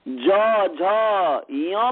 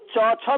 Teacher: ज झ य में गूंजता है परंतु च छ में नहीं गूंजता है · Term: घोष